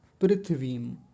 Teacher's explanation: प्रायः पृथ्वीम ऐसे करके बोल देते हैं। पृथ्वीम यानी थ पर जो इ की मात्रा है उसको छोड़ देते हैं।